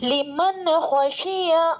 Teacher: لمن خشی، لام متحرک میم متحرک نون ساکن کے بعد حروف حلقی میں سے خا آ رہا ہے تو نون ساکن کی آواز کو ظاہر کر کے بلا غنہ کے جلد پڑھیں گے، اس کو اظہار کہتے ہیں. خا متحرک ہے، شین متحرک ہے، یا متحرک ہے.